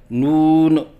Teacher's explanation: غلطیوں کی نشاندہی: آواز ناک میں لے کے جانا، جیسے نون، یہ غلط ہے۔ آخر میں نون کے اوپر قلقلہ کرنا، جیسے نون، یہ غلط ہے۔